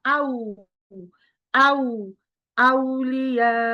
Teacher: আউ বলার সময় খেয়াল করবেন কখনোই আও বলবেন না। উ বলবেন, ও না।